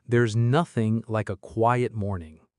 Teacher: Feel the th in there and nothing. Tongue between teeth, voice on. There's nothing like a quiet morning.